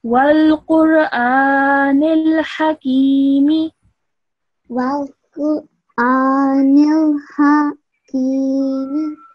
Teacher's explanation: this ha sound should only be said for 1 second